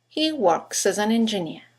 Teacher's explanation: You've got 3 words that begin with a vowel, as, an, and engineer. In connected speech, they all run into each other. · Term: phonetic links